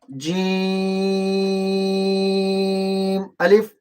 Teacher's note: جیم کو لمبا کریں گے اور الف کو بالکل ہی نرم آواز سے لمبا نہیں کریں گے